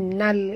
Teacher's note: Ini adalah alif lam qamariyah ataupun disebut sebagai izhar qamari ya. Jadi bacaannya mesti diizharkan. Jelas bunyi lam yang mati. Sebab itu kita baca tadi wala ya'laman nal, bukan nala tapi nal.